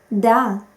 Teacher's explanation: the tip of the tongue rests on the back part of the upper teeth and is located somewhere between the upper teeth and upper plate